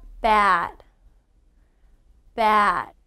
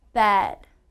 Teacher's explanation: when i say ah my mouth is round and my jaw drops however when i say e my mouth does not drop and it's wider